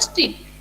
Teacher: जैसे मैं बोली तुम लोगों को स्ट्रीट, STR, तीनों है, तीनों को प्रोनाउंस क्लियर कर रही हूँ, बीच में कुछ भी vowel नहीं है, तो at that time that is known as your consonant cluster।